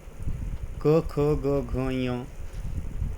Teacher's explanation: कंठातून उच्चारण होत म्हणून कंठ्य म्हणायचं